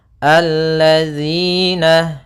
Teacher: Maka di sini ada hukum tajwid berupa mad tabi'i, yaitu kasrah bertemu ya sukun, panjangnya 2 harakat